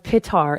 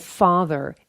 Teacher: the shift from the P sound to the F and V sounds